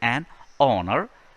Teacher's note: It is honor. H is silent. So we say an honor, which is definitely a vowel sound.